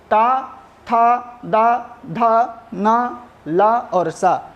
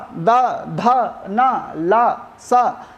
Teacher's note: उच्चारण-स्थान दांत से होता है दांतों के माध्यम से होता है